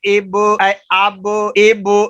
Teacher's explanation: با کو پڑھنے کے بعد بھی آواز پیدا ہو رہی ہے، یہ حروف قلقلہ ہے